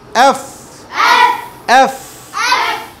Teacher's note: নিচের ঠোট উপরের দাঁত মিলবে